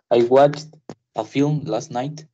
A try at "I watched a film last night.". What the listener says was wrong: Perfecto. I watched.